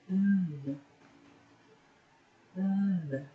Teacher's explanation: There is a vibration, and that means this is a voiced consonant.